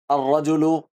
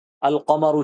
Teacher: تلفظ کے وقت لام کے بجائے حرف شمسی ہی کا تلفظ ہوتا ہے